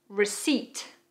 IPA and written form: rɪsiːt (Receipt)